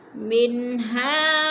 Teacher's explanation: मिन पे इज़हार हो रहा है, गुन्ना नहीं करेंगे, नाक पे आवाज़ नहीं दे जाएंगे, हा को थोड़ा सा खींचेंगे।